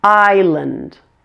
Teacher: the A in land is pronounced as a schwa, since land is in a weak syllable.